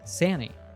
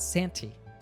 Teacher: the N letter combination loses the T